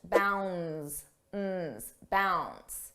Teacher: Notice how bounds, the D is not pronounced.